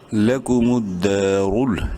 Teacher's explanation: رو کو منہ بھر کے پڑھیں گے پیش کی وجہ سے